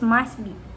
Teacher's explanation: in the word must be, the phoneme T is deleted, so the pronunciation is must be.